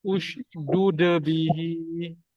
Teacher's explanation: Jadi kol-kolah tu keluar angin je bunyi dia.